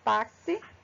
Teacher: a letrinha x nessa palavra e em mais algumas outras não em todas ela vai ter o som de KS